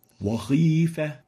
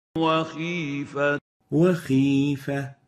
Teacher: And the right way of pronouncing this word and this letter is وخيفة Wakhifa. So it should have the relative tafkhim characteristic in the kha when there is kasra